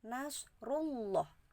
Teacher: Ini kalimatnya nasrullahi. Nasrullah, alif lamnya di depan huruf Allah itu tidak terbaca, tapi langsung terbaca di lam yang tengah. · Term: Idgham Syamsiah, idgham syamsiyah